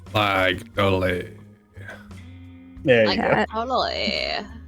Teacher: the California accent is just a vocal fry